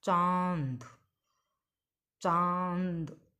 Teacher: तो इसका हमारे मुंह से भी ध्वनि निकल रही है और नाक से भी ध्वनि आ रही है, यानी अ की ध्वनि भी आ रही है और न की भी ध्वनि आ रही है। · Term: अनुनासिक